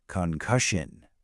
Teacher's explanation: 3 syllables, with the stress firmly on the second.